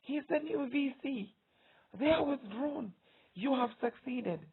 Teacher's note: All the words are mentioned with emphasis, with stress, with force. So the entire sentence is pronounced in an all high tone.